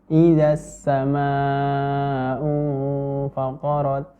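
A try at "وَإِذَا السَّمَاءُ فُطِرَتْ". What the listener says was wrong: Ya, jadi dan jangan sampai menjadi huruf S, nafas yang keluar.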